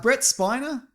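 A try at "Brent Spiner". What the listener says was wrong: Are you saying Brett or Brent? It's Brent. Like a David Brent.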